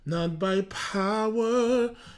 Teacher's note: Quand ils veulent mettre en avant le P avec le mot qui vient avec, ils laissent échapper du souffle avec le P. Donc le P, ils le font assez percussif et ils lèvent du souffle.